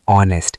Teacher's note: The H is totally silent. The first sound you actually hear is O, a vowel sound.